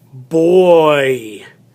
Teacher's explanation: it has the oi sound it is one syllable two vowels same kind of sound